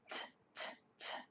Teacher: T is a voiceless sound. T, t. When we say t, there is not a vibration. Our throat doesn't move. T, t, t. But when we use the D sound, d, d, d, d, d, we can feel that our throat is moving.